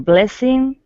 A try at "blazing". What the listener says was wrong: Almost. There's no S in blazing. It's a Z. Blazing. Can you hear the difference between blazing, which doesn't exist, and blazing? Can you hear the difference? So remember, the Z is a vibrating, voiced sound, and the S is not vibrating. It's voiceless.